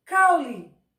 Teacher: a letra E, que é a letra correta no final da palavra, sai com som de I, porque ela sai fraca. Ela sai com som de semivogal.